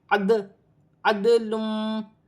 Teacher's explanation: دال کی آواز پلٹ کر آ رہی ہے، اسے قلقلہ کہا جاتا ہے